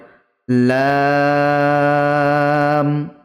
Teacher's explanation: জীভের আগার কিনারা ও সামনের উপরের দুই দাঁতের পাশের দাঁতের গোড়ার সাথে লাগিয়ে উচ্চারিত হয়